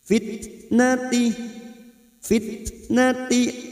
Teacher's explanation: ada huruf ta sukun yang memiliki sifat Hames